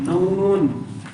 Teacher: یہ نون اور میم کی ذاتی صفت ہے جو ہر حال میں پائی جاتی ہے. جب ان حروف کو ان کے مخرج سے ادا کیا جاتا ہے تو آواز بغیر کسی ارادے کے ناک میں چلی جاتی ہے. اس حالت میں انہیں حروف اغن کہتے ہیں.